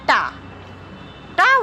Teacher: वर्ण दंत नहीं है यह मूर्धन्य है